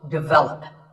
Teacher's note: This is pronounced wrongly by many learners of English as develop. But the first syllable is actually de, and the stress is on the second syllable. So, develop.